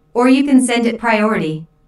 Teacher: notice the stress on or which emphasizes that there is another possibility